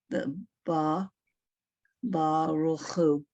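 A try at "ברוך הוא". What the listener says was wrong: Yes, Baruch. It's a separate word though. Baruch, who? You don't put it together. You don't say Baruch who. Baruch, who?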